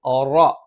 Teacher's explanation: വളരെ ലളിതമായി പഠിക്കാവുന്നതേയുള്ളൂ മുസ്തീ റ നാവിന്റെ തലയുടെ മുതുക് മേലെ മുൻപല്ലിന മോണയിൽ റ എന്ന് ഉച്ചരിക്കുമ്പോൾ നാവിന്റെ മധ്യഭാഗം മുകളിലേക്ക് ഉയരും അതുകൊണ്ടുതന്നെ ഒരു കനപ്പിച്ചുള്ള ശബ്ദമായിരിക്കും